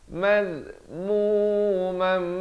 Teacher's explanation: masuk beserta dengung, daripada mazmuman jadi mazmumam, tapi jangan lupa dengungkan 2 harakat